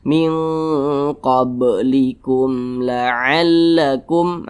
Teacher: bukan huruf mim Tapi huruf lam maka hukumnya adalah izhar syafawi dibaca jelas tidak berdengung jadi jangan dipanjangkan jangan ditahan suaranya pendek saja